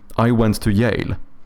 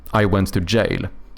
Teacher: a common mispronunciation by Swedes is to do a soft J, which sounds like a Y